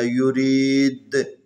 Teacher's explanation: دال کے اوپر قلقلہ کرنا